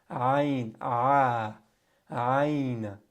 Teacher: ayn is in the middle of the throat. If you have a hard time pronouncing ayn, get a toothbrush, stick it down your throat.